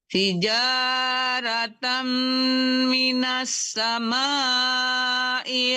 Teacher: Ulang dari hijaratam langsung ditekankan mim ya, tanwinnya.